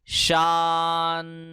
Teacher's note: I am transitioning from the letter sheen to noon. I am not saying an. There is no jerkiness here.